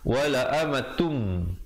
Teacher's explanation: Asalnya wala amatun, tapi bila datang mim wala amatum dengan kadar dengung 2 harakat. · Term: idgham bila gunnah